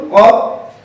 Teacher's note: কফ হরফটি পড়ার সময় আওয়াজ শক্ত হবে, মোটা হবে, উপরের দিকে দাবিত, বাতাস বন্ধ, আওয়াজও বন্ধ · জিহ্বার গোড়া তার বরাবর উপরে তালুর সঙ্গে লাগিয়ে কফ হরফটি উচ্চারিত হয়। কফ হরফটি পড়ার সময় এই কফ হরফটি কফ বলার শেষে বাতাস আসে, এটা হামসের হরফ না, এটা হামজার হরফ বলে না, এটা কফ।